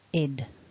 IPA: ɪd